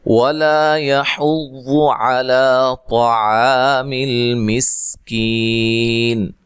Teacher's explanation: واو کو ادا کرتے ہونٹوں کو گول کرنا ہے، لا الف مدہ ہے، یحض ہا کو واضح نکالنا ہے، واد کو موٹا پڑھنا ہے، ٹھیک ہے، علی عین کو واضح، لا مد اصلی ہے، طا کو خوب موٹا ادا کرنا ہے، عین کو واضح نکالنا ہے، اور الف کو باریک پڑھنا ہے۔